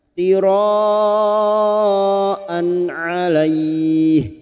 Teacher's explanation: An fathah tanwin bertemu ain idhar halki. Fathah tanwin pada huruf hamzah dibaca jelas tanpa mendengung. An 'alaih. Bertemunya fathah dengan ya sukun dan diikuti huruf hidup yang dibaca waqaf mad layin.